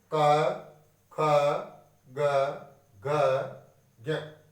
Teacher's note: क वर्ग का उच्चारण स्थान होता है कंठ। कंठ से इनका उच्चारण होता है